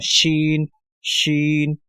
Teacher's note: شین کو زبان کے درمیانی حصے سے اور یہ اوپر تالو کی طرف اٹھنے سے جو ہے ادا ہوتا ہے، جہاں سے ہم نے جیم کو ادا کیا تھا تو وہیں سے شین بھی کبھی وہی مخرج ہوگا، شین شین۔